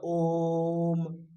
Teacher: केवल ओ स्वर जो है वह प्लुत है